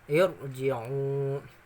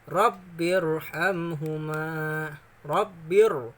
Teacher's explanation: Ro-nya tebal karena ro-nya mati, sebelum ro mati ada hamzah. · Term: ro tafkhim